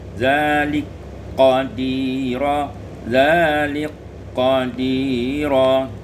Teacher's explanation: Pada ayat yang 133 zalika qadira idghamul kaf fil qaf diidghamkan kaf dan qaf menjadi zalik qadira zalik qadira.